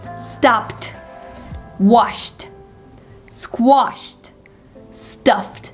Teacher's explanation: If the verb is ending with the voiceless sound, such as these ones, the past simple ending is pronounced like T.